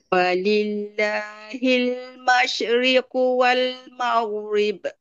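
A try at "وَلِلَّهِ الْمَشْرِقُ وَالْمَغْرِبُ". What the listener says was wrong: Ghin cantik tapi syin masriqu. Betul. Tak nak masriquu.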